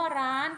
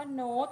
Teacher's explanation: มีรูปวรรณยุกต์โทแต่มีเสียงวรรณยุกต์ตรี